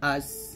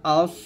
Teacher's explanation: তাহলে সিনটা পাতলা, হামজা সিন জবর আস এরকম, আর সদ মোটা হবে